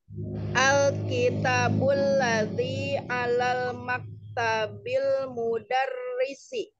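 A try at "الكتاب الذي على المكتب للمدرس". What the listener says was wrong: Ada satu huruf yang terlewat bacanya. Ini hurufnya huruf jar ya Umi ya. Lil mudarrisi.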